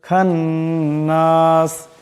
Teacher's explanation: এই নুন মুসাদ্দকে এক আলিফ পরিমাণ গুন্না করিয়া পড়তে হবে